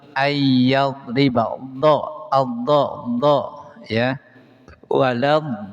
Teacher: Makhraj dod ihda hafatil lisani wa ma yaliha minal adrasi fi janibil aisari wal aimani. Dari salah satu pinggir lidah, terus bertemu atau bersanding dengan gigi geraham atau gusi yang kanan atau yang kiri.